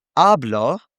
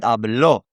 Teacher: Hablo has the emphasis on the beginning vowel, the vowel in the first syllable, you could say. Whereas hablo has it in the ending.